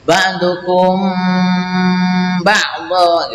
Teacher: Ini ikhfa syafawi karena bertemu dengan ba, maka membacanya didengungkan